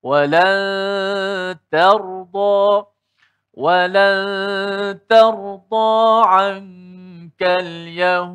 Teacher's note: Walaupun selepas huruf ta itu ada huruf ra yang tebal mati, ta itu tetap dikekalkan nipis. Tidak ada dalam keadaan huruf ta itu tebal.